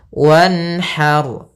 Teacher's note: Harus jelas suara nunnya dan tidak boleh tahan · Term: bacaan izhar